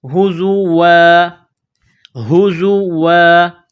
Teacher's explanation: جب وقف کریں گے تو الف کو ظاہر کریں گے ، ہزوا، ہزوا، قال، قاف کو موٹا کرنا ہے، قال اعوذ،